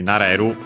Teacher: naru accented. So low high low